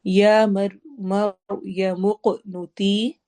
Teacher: را ہیوی ہوگا، موق قاف پہ قلقلہ ہوگا اور وہ ہیوی موٹا کر کے بھی پڑھیں گے ہم.